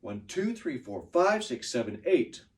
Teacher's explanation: so I'm stressing two five and eight